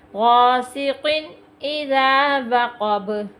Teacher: حمزہ حروف حلقی میں سے ہے، غنہ نہیں ہو رہا قاف پہ